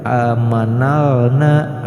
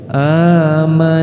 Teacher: alif lamnya tidak dianggap, tidak dibaca, dari huruf nun yang berfathah langsung dimasukkan kepada huruf yang bertasdid. Maka cara bacanya bukan amanalna, akan tetapi langsung dari nun ke nun lagi, amanannasu gitu. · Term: alif lam samsiyah